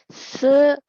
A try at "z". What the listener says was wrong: Bukan se, D, Z, E. Pengucapannya D, Z, E.